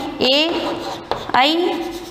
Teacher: कंठ और तालु दोनों से ही जहाँ जिसका उच्चारण होता है वे ध्वनियाँ हैं ए, आई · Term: कंठ तालु